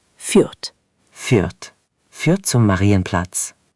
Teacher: It's führt with that German U sound. Push your lips forward like you're about to whistle.